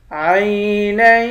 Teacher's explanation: نون کو یا کے ساتھ ملا کر یا پر غنہ کریں گے